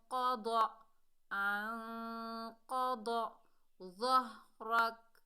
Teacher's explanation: قوف اور ضاد جو ہیں دونوں موٹے حروف ہیں، حروف استعلا میں سے ہیں، تو ہم موٹا اقفا کریں گے